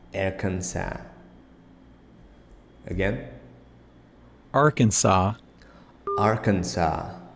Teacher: you see that the S is not pronounced at the end